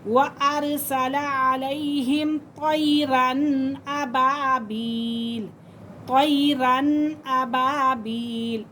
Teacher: حروف حلقی کے اندر سے حمزہ آ رہا ہے، تو اسی لیے یہاں پہ ہم غنہ نہیں کریں گے بلکہ اظہار کریں گے۔